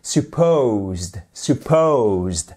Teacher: accentuation sur la seconde partie du mot supposed